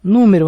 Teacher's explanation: Número é uma proparoxítona, porque o acento está na antepenúltima sílaba, nu.